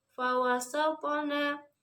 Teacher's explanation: Yang pertama adalah qalqalah sugro karena terdapat huruf to berharokat sukun yang berada di tengah sehingga harus dipantulkan secara ringan